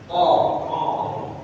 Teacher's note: Jadi dia bukan bulat Pak ya. Dia agak A.